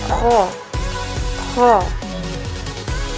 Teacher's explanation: Huruf ho salah satu huruf yang harus terdengar menebal suaranya. Pangkal lisan angkat ke belakang.